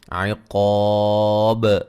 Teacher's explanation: با پہ قلقلہ کو خوب واضح کریں گے وقف کی صورت میں